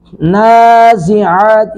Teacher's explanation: عین کو حلق سے ادا کریں گے